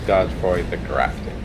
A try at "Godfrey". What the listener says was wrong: You don't pronounce the E.